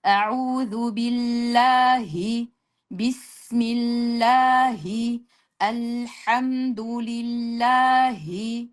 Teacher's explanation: Ya'ni oba havodagi ha bor. Mana shu Alloh ismidagi ha mana shu bizni o'zbek tilidagi yumshoq ha bilan ayni bir xil talaffuz qilinadi